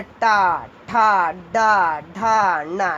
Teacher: टा वर्ग कहाँ से? मूर्धा, यानी जबान उल्टी करके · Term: मूर्धन्य